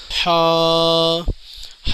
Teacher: یہ حلق کے اوپری حصے سے پڑھا جاتا ہے